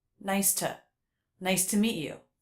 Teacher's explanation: also reduced the word to to the schwa